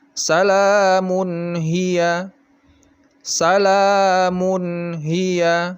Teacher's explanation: dibaca jelas izhar nya tidak boleh didengungkan dan tidak boleh terlalu cepat juga